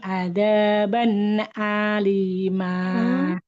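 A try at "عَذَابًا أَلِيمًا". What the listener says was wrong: Azaban alima. Tidak ada, tapi za. Azaban. Za. Lidahnya tempelkan ke ujung gigi sari atas. Azaban. huruf sa dengan zal Ibu ya. Ini dua huruf yang sama tempatnya. Azaban.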